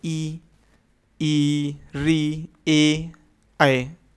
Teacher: पहला होता है अग्र स्वर मतलब जीभ के आगे भाग का यूज होता है इनको बोलने में